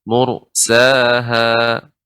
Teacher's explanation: Kalau dibaca dengan tebal, ya, karena ra sukun sebelumnya dhammah, huruf yang berharakat dhammah maka dibaca dengan tebal.